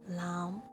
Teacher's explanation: the fifth tone is the rising tone and starts from the lowest of your range and rises to the middle. Lam is also this one, lam.